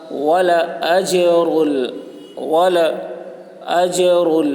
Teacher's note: جیم حروف قلقلہ میں سے ہے اور اس پر جزم ہے، اس لیے جیم پر قلقلہ ہوگا